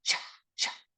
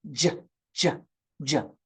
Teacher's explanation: I want you to say the sound CH but this time I want you to add voicing to it make your voice box work the sound becomes j j j turn off your voice box turn it on J